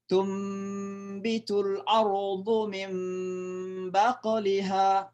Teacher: Itu namanya iqlab. Ya, jadi suara nun ketemu ba seolah-olah dibaca mim. Artinya suara nun dibalik menjadi suara mim.